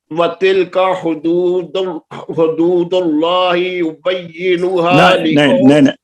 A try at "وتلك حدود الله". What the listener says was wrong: نہیں ابھی بھی پیش نہیں پڑے گی. دونوں دال کے اوپر پیش ہے. اور آگے دونوں.